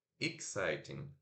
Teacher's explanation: Tem o E, mas é o I curto, né?